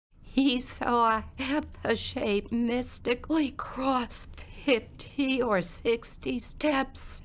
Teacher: My vocal cords uh stay open rather than open and shut and I sound breathy quite frequently. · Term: abductor specmotic dysphonia